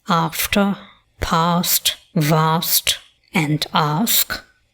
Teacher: Words of the lexical set bath have the broad, that is the long back vowel, as in the words after, past, vast, and ask.